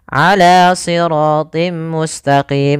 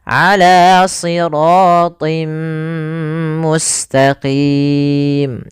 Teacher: Nah, di sini kita dapati ada namanya kasrotain bertemu dengan huruf mim. Apabila ada kasrotain bertemu dengan mim, maka langkahnya adalah memasukkan tanwinnya. Awalnya ala siratin, ketemu mim, tinnya hilang, masuk ke mim sehingga ditahan. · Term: idgham bi gunnah